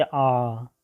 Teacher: विवृत यानी कि ओपन, ठीक है, जिन स्वरों के उच्चारण में मुख द्वारा पूरा पूरा खुल जाता है, जैसे आ, ठीक है, आ में पूरा मुंह खुल जाता है।